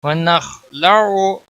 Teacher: ख को मोटा पढ़ेंगे, ख के ऊपर कलकला नहीं होना चाहिए, बाकी किसी भी हरकत वाले हरफ को खींचना नहीं।